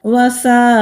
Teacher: وساءت، یہاں بھی مد متصل ہے، 3 سے 4 الف کے برابر پڑھیں گے، تا ساکن ہے تو ہمس کریں گے یعنی کہ سانس کو جاری رکھیں گے